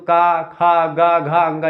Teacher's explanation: जैसे कि आप का वर्ग बोलते हैं तो का, खा, गा, घा, अंगा तक आप बोलते हैं तो का, खा, गा, घा, अंगा, ये सब कहाँ से, कंठ से निकलता है